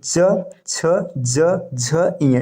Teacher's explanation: च वर्ग च छ ज झ य ये तालू होता है